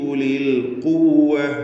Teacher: ദീർഘാക്ഷരമായ യാ ഇൽത്തിഖാഉ സാക്കിനൈൻ പരിഹരിക്കാൻ വേണ്ടി ഒഴിവാക്കി